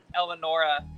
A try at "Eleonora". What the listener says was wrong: it's Eleonora. Yeah, you pronounced the second E.